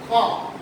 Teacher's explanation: খ উচ্চারণ করতে গেলে বাতাসের যে বেগ, এই যে নিঃশ্বাস, এগুলোর বেগটা বেশি থাকে বিধায় এটাকে বলা হয় মহাপ্রাণ